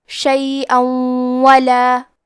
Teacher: واو حروف الادغام بغنہ میں سے ہے، تو ہم تنوین کو واو میں ملا کے غنہ اور تشدید کے ساتھ یہ حکم کو ادا کریں گے